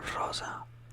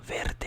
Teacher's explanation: the rosa is like a quick roll. Verde is more like a longer roll of the R.